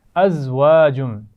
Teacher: زا ہے, اس کو سیٹی سے پڑھیں گے. واؤ کے مخرج کا خیال رکھنا ہے, اس کو دانتوں سے نہیں بلکہ ہونٹوں کو گول کرتے ہوئے ادا کرنا ہے.